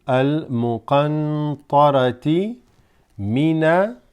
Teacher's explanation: Wal qanatiril muqantarati. So here, this technically is a noon sakina, as a noon with sukoon, followed by a ta. Okay, so this becomes ikhfa.